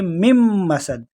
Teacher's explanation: دونوں میم کو آپس میں ملائیں گے، اور آخر میں دو دال ہے، اس کے نیچے دو جو ہے نا زیر ہے، تو اس کو بھی ایسے ہی پڑھیں گے مم مسد، مم مسد.